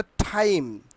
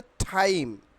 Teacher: যেখানে আমরা টি এর উচ্চারণ এতদিন টয়ের মতো শিখেছি, বাট এটা ঠয়ের মতো উচ্চারণ হবে। এক্ষেত্রে উপরের দাঁতের পাটির মূলে জিহ্বা দ্বারা স্পর্শ করে ঠয়ের ধ্বনিটি করতে হবে।